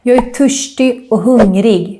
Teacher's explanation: we skip the T in the end when we say the word törstig and hungrig. And then since I'm from Stockholm, I also make this RS combination sound more like a sh sound.